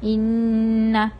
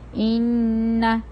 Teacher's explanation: آواز ہماری ناک سے آتی ہے، اور ان میں ہماری زبان جو ہے وہ تالو کی طرف چپکی ہوتی ہے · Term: غنہ